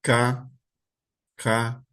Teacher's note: K é lá na garganta que tá fazendo, a boca tá até aberta e tá lá K. O K K K também tá vindo daqui da garganta. · Elas são chamadas velares, e elas se referem a um som que surge da garganta. Então, o som, ele é produzido pela garganta, ele não é produzido pela boca. Então, você vai falar K, K, é lá na garganta que está fazendo, a boca está até aberta, e está lá, K.